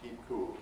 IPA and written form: ˈkiːp̚ ˈkuːl (keep cool)